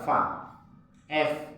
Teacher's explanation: Ujung gigi atas bertemu dengan bibir bawah. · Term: huruf fa